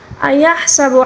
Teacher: حا کو حلق کے درمیانی حصے سے ادا کریں گے